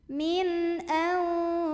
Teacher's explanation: maka nunnya dibaca jelas, bunyi an dan tidak ditahan. Min au. Ada ikhfa ausat karena ada nun sukun ketemu sama huruf shad, maka bunyi nun sukunnya samar-samar menuju huruf shad sambil dengung. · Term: idhar halqi